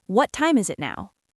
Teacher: The T in what might even be a flap T sound, which is similar to a light D sound in American English, like wad. And is it now? · the s sound carries over to the it.